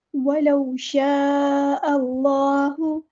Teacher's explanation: وَلَوْ شَاءَ اللَّهُ، وَلَوْ، واؤ پہ ساکن ہے اور اس سے پہلے زبر ہے تو مد لین ہو رہی ہے، نرمی سے موڑنا ہے، واؤ پر مد لین ہو رہی ہے۔